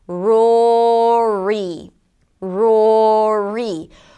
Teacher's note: round the lips, bring the tongue up and finish it up with a high E - pull the lips to the sides of it